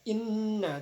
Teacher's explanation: ada gunnah sebab huruf nun ditasdid. Jadi bacanya inna, jadi ditahan.